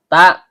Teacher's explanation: ujung lidah bertemu dengan pangkal gigi seri atas